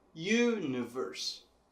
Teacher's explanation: Já em inglês, essa sílaba tônica está bem mais para o começo da palavra. Na verdade, a primeira sílaba, universe.